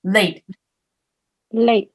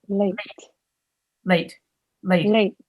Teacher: you closed your mouth and you touched the tongue to the roof of your mouth so no more air is coming out